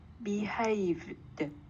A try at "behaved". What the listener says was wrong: không có V, đừng đọc thành thành V, nó chỉ là đúng rồi. Đọc lại coi.